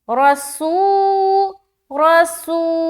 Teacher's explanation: آگے رسولم، را زبر را، را کو موٹا رکھنا ہے کیونکہ زبر ہے، سین واو پیش سو، واو ساکین اور اس سے پہلے پیش کی حرکت یعنی کہ واو مدہ کا قاعدہ۔ تھوڑا کھینچ کر پڑھیں گے، تھوڑا کھینچنے کی مقدار کیا ہے؟ ایک الف ہے۔